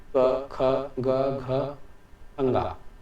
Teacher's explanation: अब कंठ कहने का मतलब है कि क वर्ग के ये पांचों वर्ण का उच्चारण, क्या कहा मैंने? क वर्ग के इन पांचों व्यंजनों का उच्चारण कंठ से होता है।